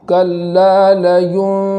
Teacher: آخر میں نون پر تشدید ہے تو اس نون کو بھی ایک الف کے برابر گنہ کرتے ہوئے پڑھیں گے